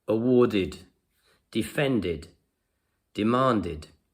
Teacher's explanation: If we put them into the past, they have the id sound at the end.